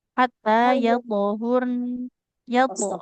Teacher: Nah, thnya memantul dan tebal ya.